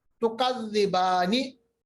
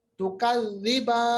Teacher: हरफ मद के बाद सुकून आरिज आ गया, ओरिजिनल नहीं, टेम्पररी सुकून आ गया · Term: मद आरिज